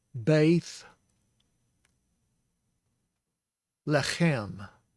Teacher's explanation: That's a B sound, plosive, because it's got the dagesh, and the A sound because it's a sere, and this is the Y, bay, and it's a TH, and it is the spirit sound, the fricative sound.